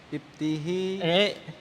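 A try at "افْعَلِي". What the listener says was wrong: If'ali, tidak berubah itu ainnya. Ain fiilnya. Ta-nya tidak akan pernah berubah. Ingat ta-nya itu kan ain fiil ya kan? Tidak akan pernah berubah. Pasti fathah terus sampai ke atas. Ainnya tidak akan pernah berubah.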